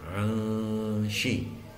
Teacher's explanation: Bacaan ikhfa hakiki terletak pada lafaz anshi, yaitu tanwin bertemu dengan huruf shin, sehingga cara membacanya disamarkan disertai dengung